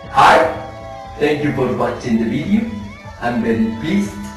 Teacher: Some of the characteristics of the Indian English are low rhoticity, a strong vibration, a syllable time pronunciation very similar to Spanish, exaggeration of the L and T sounds, and a musical intonation very similar to some of the Arab countries